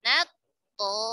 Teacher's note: Langsung masuk ke huruf to, ta-nya hilang. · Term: idgham mutajanisan shaghir kamil